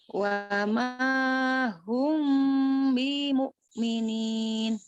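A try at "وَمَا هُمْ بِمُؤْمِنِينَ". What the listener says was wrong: Bi-nya jangan jangan dipanjangin. Bimu'minin.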